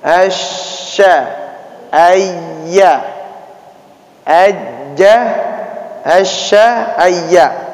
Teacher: Yang berperan adalah tengah-tengah lidah, nempel ke langit-langit, nih ke atas